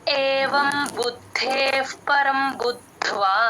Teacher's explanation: ప ముందు విసర్గ ఎప్పుడు వచ్చినా ఎఫ్ సౌండే చెప్పాలి